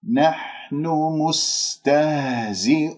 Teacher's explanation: الحاء رقيقة، لا تخرج كمية هواء تهجم على مخرج الحاء